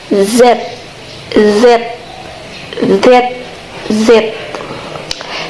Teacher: biarkan udara keluar sambil menggetarkan pita suara. Jadi, konsonan Z ini harus bergetar gitu pita suaranya. Nah, yang ketiga itu suaranya hampir mirip dengan huruf S tapi lebih bergetar.